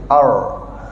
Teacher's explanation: Ini ra biasa, ar. Cara nak buat ra tebal, masa kita sebut ar tadi tu lidah kita ke belakang sedikit.